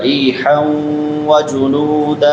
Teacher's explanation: را بریک ہوگی اور را کے بعد یا مدہ ہے اور حا پہ نون تنوین ہے اور بعد میں حروف یرملون میں سے واو آ رہا ہے تو ادغام مع الغنہ ہوگا